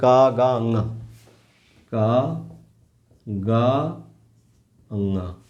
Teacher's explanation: कम हवा निकलती है ह का जैसी ध्वनि नहीं आती है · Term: अल्प प्राण